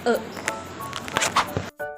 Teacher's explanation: bunyi yang dihasilkan dengan cara lidah merata tidak ada lidah yang dinaikkan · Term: Bu pusat